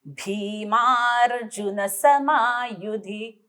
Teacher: ओठ टेकले जातात. भी ला थोडा जोर लागतो.